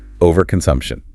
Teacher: The stress falls hard on the sump syllable.